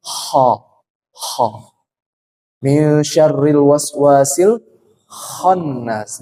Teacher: syaratnya kho ini tidak boleh terlalu ngorok, tidak boleh bergetar terlalu berlebihan ya. Jadi dia halus ya.